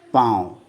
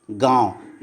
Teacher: उसका जो उच्चारण होता है ना वह नाक और मुंह दोनों से उच्चारण होते हैं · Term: अनुनासिक